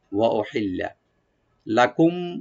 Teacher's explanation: লাম শুধু ডাবল করে পড়বো আমরা, এখানে টান হবে না, গুন্না হবে না